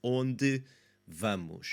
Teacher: And I already employed the liaison in my description there. So onde ends with that unstressed E, bleeds into the V. Vamos, it's not going to have too much of an issue there.